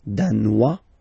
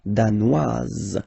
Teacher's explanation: Danois, don't pronounce the final S. Danoise, here you pronounce it.